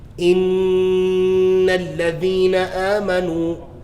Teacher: My lips are open, but the sound is coming through my nose. Look. It stops. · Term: ghunna